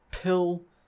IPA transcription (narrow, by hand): 'pʰɪl